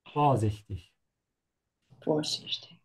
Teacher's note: Make sure to emphasize the prefix here. To stretch the O instead of the I.